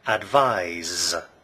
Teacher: Advise has a z voiced sound.